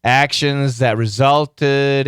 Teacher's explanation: the z sound knocked out that th